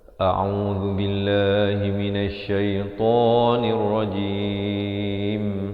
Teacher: nirojim di akhir baru ditutup ke mulut jangan ditutup awal